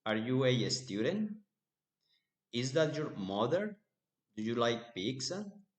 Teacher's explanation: Rising intonation with yes, no questions.